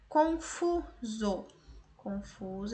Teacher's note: essa a penúltima sílaba é mais forte, paroxítona também.